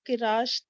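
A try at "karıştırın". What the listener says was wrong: का को थोड़ा लंबा करना है, बाकी रिश्तरन, का रिश्तरन।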